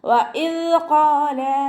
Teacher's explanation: ദാല് ഖൽഖല letter അല്ലാത്തത് കൊണ്ട് half സുക്കൂന് കൊടുക്കാൻ ശ്രദ്ധിക്കുക. വഇദ് ഖാല എന്ന് ഉച്ചരിക്കരുത്.